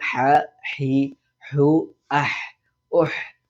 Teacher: തൊണ്ടയുടെ മധ്യഭാഗത്ത് നിന്നാണ് ഹ എന്നുള്ള അക്ഷരം ഉച്ചരിക്കുന്നത്.